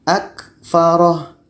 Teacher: Ro-nya pendek saja, sedangkan huruf yang terakhir kita matikan. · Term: ha dhamir